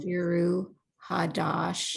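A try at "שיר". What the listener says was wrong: Not shiru, sheer.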